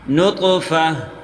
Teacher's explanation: وقف کی صورت میں فا ہا کے ساتھ ملا کے وقف کریں گے۔